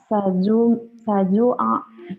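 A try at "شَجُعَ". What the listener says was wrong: Saju. Shin. Syajua.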